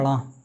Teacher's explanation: तो इसका उच्चारण स्थान क्या होगा ट वर्ग का मूर्धा इसका क्या होगा मुर्धा और मूर्धा के साथसाथ क्या होगा नासिका